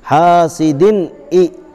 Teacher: 2 زیر کی تنوین کے بعد حروف حلقی کے 6 حرفوں میں سے حمزہ آیا ہے، اس لیے بغیر غنہ کے جلد پڑھیں گے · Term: اظہار